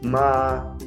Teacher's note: el primer tono es una rayita derecha horizontal que se coloca la vocal más es un tono alto y sostenido · Ma es un tono alto y sostenido.